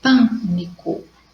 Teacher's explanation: Então, a palavra pânico vai receber acento porque ela é uma proparoxítona. A sílaba mais forte é no pan. Pânico. Primeira, segunda, terceira.